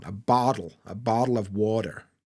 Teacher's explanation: a bottle of water is kind of American they use the D